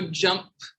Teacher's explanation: The p is just air. You will not feel it in your throat.